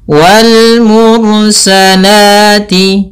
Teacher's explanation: la ini mad thabi'i yaitu fathah bertemu alif.